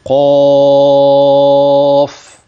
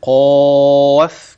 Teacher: حرف المد المفخم تبع لما قبل من قف يظل مفخما حتى نهايه الصوت يعني الصحيح كده قاف انما ان انا اقول قاف كده لا